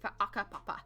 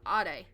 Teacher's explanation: our iwi here, there is a guttural stop on H's